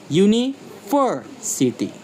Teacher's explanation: Primary stress on ver and lighter secondary stress on the first U.